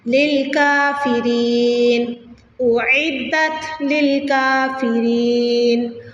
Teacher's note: اعدت للکافرین، کاف کے اوپر کھڑی زبر آ رہی ہے تو لمبا کر دیا جائے گا